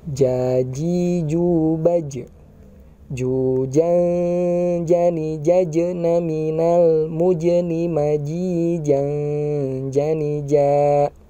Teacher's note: Catatannya adalah ketika mengucapkan huruf ja itu tanpa keluar nafas. · Jujan jani jajna minal mujni maji jani ja. Ya, untuk huruf ja ini suaranya seperti yang tertekan ya dan tertahan. Apalagi ketika dia sukun.